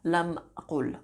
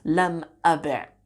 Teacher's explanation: So lam aqul is what we end up with, right? That long vowel u becomes a shortened version of it on the previous letter